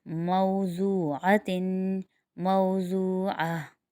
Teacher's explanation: यहाँ पर वाव मद्दा बन रहा है, ठीक है, क्योंकि वाव साकिन उससे पहले पेश है, इसलिए इसको एक अलिफ की मिकदार खींचेंगे